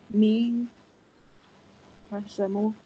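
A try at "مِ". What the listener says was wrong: Mim kasra mi. You just mix the sounds of vowel.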